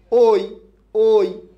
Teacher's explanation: এই ঐ ধ্বনিটা উচ্চারণ করার সময় আমরা প্রকৃতপক্ষে দুইটা স্বরধ্বনিকে একসাথে যোগ করে উচ্চারণ করি একসাথে যোগ করে উচ্চারণ ঐ এর মধ্যে অও আছে ইও আছে